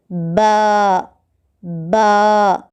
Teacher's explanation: با دونوں ہونٹوں کے گیلے حصے سے ادا ہوتا ہے